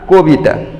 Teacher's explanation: এই কারণে দেখো এখানে এই কবিতা, এখানে আমরা উচ্চারণ করে লিখলাম কবিতা, তার মানে ও কটা আর ক এর মতো স্বাভাবিক না, কটা কো উচ্চারণ হচ্ছে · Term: সংবৃত উচ্চারণ